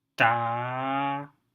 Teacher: you can see my pitch contour lines slowly increases just like the native speakers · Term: high tone